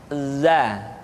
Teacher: diucapkan dengan cara ujung lidah kita berada di antara dua gigi seri bagian atas dan bagian bawah. Za, menyerupai dengan pengucapan huruf Z di dalam huruf Latin. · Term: huruf za